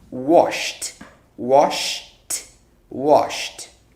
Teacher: So you just say wash. So this washed will sound like a T.